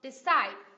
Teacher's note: Decide, nhấn vào âm tiết thứ hai đúng không?